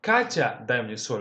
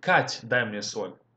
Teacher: Okay, so whenever we are addressing somebody, which is in this case is going to be Katya, sometimes we shorten it and kind of remove the last vowel. For example, in this case, we can say, instead of saying Katya, дай мне соль, we can say Кать, дай мне соль. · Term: shorten the addressee